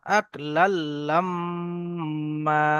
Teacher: লাম মিম জবর লাম, তো লাল লাম মিম আলিফ জবর মা, যেহেতু দু জবর এসছে তো এক জবর গণ্য করে এক আলিফ পরিমাণ টান দিয়ে পড়তে হবে · আক লাল্লাম মা, এখানে মিম মুসাদ্দাদ আছে, ওয়াজিব গুন্না এক আলিফ পরিমাণ গুন্না করতে হবে।